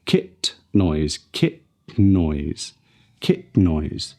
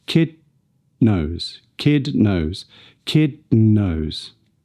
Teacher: We can also link the nasally released t and d when they connect to an N sound.